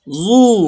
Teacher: জাল পেশ জু, জিব্বার আগা দিয়ে পাতলা করে নরম করে